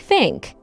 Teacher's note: in Cockney, the TH sound in think might sound like an F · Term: Cockney accent